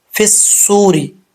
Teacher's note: صاد حروف مستعلیہ میں سے ہے، موٹا پڑھا جائے گا، پر پڑھا جائے گا